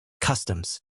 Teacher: And customs is pronounced slash kvs.tmz slash, stress on the first syllable, with a soft T and a clear Z sound at the end